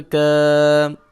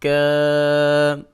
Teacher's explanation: اور کاف کے اوپر کھڑی زبر ہے، اس کو 1 الف کے برابر کھینچ کے پڑھیں گے، اور زا اور کاف کے اوپر شد بھی ہے، لہٰذا ان کو سختی کے ساتھ پڑھیں گے۔